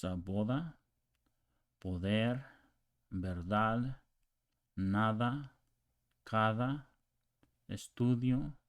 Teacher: it has a little bit of tongue on the tip of your teeth. So it's boda, poder, verdad, nada, cada, estudio. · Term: the TH in other